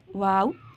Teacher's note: दोनों होंठों को गोल करने से वाव अदा होता है।